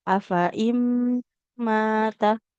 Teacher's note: ada nun sukun ketemu mim dihukumi idgham bi gunnah. Melebur langsung ke huruf mimnya.